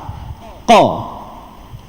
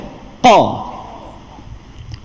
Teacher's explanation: Qaf dan juga kaf duduk di bahagian pangkal lidah yang diangkat ke lelangit lembut. Kita tak tahu mana lelangit lembut tu, tengok mana pangkal lidah, atas dia tu lah lelangit lembut.